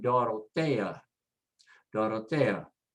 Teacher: There is the example of putting the stress as 2 separate syllables, the E-A at the end, break it in half. And so the stress goes next to the last